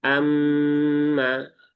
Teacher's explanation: Kemudian mimnya bertasdid ya. Pastikan ditahan dulu tiga harakat. Sempurnakan ghunahnya. Amma. Kemudian setelah sempurnakan ghunahnya di situ ada alif.